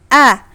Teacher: kalau hamzah ada di pangkal tenggorokan, a ya, ditekan di pangkal tenggorokan